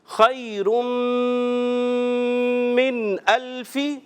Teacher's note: غنّے کو ایک الف کھینچنا ہے